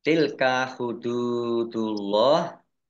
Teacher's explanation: Tilka hududullah dal domah wawu sukun mat tabi'i dibaca panjang 2 harokat. Allahnya dibaca tebal karena harokat di depannya dhammah.